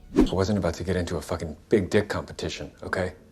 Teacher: Since it's said quite quickly, the t sound at the end of wasn't is almost silent, as is the t sound at the end of about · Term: connected speech